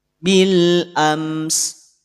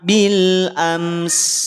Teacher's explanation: Cukup satu sin saja, satu harokat saja, menyempurnakan aliran nafas sekaligus juga aliran suaranya, menyempurnakan sifat hamsnya juga sifat rokhawahnya.